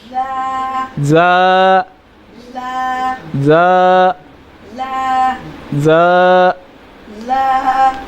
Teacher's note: زا زبان کی نوک یہ دیکھیں زبان کی نوک اور دونوں دانتوں کے اندرونی کنارے سے ادا ہوتا ہے. زا جو ہے زبان کی نوک اور دونوں دانتوں کے اندرونی کنارے سے ادا ہوتا ہے. زا زا اس میں جو ہے وہ تھوڑی سی سیٹی کی ایسے शिद्दत थोड़ी पैदा होती है ऐसे ज ऐसे, इसको जो है ये आवाज़ पैदा होती है।